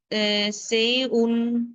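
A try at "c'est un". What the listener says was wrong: সেউন না, এটা টি অ্যাটাচড হবে, সেতুন, সেতুন,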